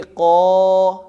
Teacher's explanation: آگے الف سے پہلے آ رہی ہے زبر، تو اس کا مطلب یہ الف مدہ ہے، اس کو لمبا کر کے پڑھیں گے. اس کو پڑھیں گے قا، لمبا ہو جائے گا.